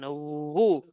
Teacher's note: উ ঠোঁট থেকে যেন উচ্চারণ হয়, ভিতর থেকে উচ্চারণ না আসে